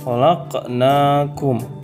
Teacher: Dibacanya dengan cara memantulkan huruf qalqalah sugro di tengah kalimat.